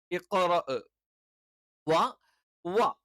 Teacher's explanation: ചുണ്ട് വൃത്താകൃതിയിൽ ചേർത്തു വെച്ചുകൊണ്ടാണ്